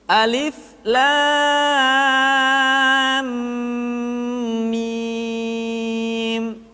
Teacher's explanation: lam dibaca panjang lah selama enam harakat kemudian mim dibaca ditahan tidak boleh tergesa-gesa karena setelah mim mati diikuti oleh huruf mim sehingga berlaku hukum